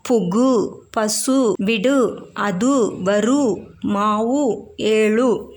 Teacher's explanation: ஒரு மாத்திரை அளவுக்கு முழுமையாக ஒலிக்கும் வல்லினம் அல்லாத உகரங்கள் எப்போதும் முழுமையாகவே ஒலிக்கும் இவ்வாறு ஓசை குறையாமல் ஒரு மாத்திரை அளவில் முழுமையாக ஒலிப்பதை முற்றியல் உகரம் என்பர்